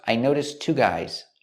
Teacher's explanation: We see the T sound at the end of notice. Noticed links to the next T sound in two. Link the words.